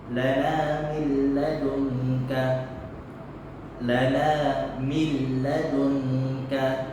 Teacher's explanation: Yakni suara nun mati ketika masuk dengan huruf idgham bila gunnah, bacaannya tidak berdengung. Dan suara nun itu hilang.